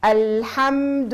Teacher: كما اللام الساكنة كما الميم الساكنة عندهم الرخاوة الجزئية